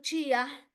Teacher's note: cuando yo pronuncio chía, la i suena fuerte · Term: llato acentual